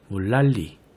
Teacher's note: 물의 받침 리을로 인해 뒤의 난, 여기의 니은이 리을로 바뀌는 순행적 유음화가 먼저 일어나고요. 마지막 음절 리의 첫 소리 리을로 인해 바로 앞 음절 니은이 리을로 바뀌는 역행적 유음화가 다시 일어나서 유음화가 총 2번 일어나는군요.